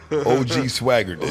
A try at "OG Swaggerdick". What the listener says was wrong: OG Swaggerdick, and you don't say it separate, nigga. It's a compound word, nigga. Swaggerdick, nigga. Nah,